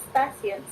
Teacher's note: Karena bunyi s adalah bunyi lamino. Jadi bunyi te, pelafalan bunyi te yang mestinya melibatkan apiko malah menjadi lamino. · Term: asimilasi progresif